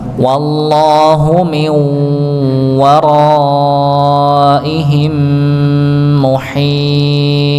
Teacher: Nah, di sini ada mim sukun ketemu mim pada kata muhita. Muhitu ya, mim sukun ketemu mim maka dibaca ya dengung ya, idgham mimi ya masuk ke huruf mim maka juga ditahan. Waraihim muhita ya begitu ya, maka ditahan ya.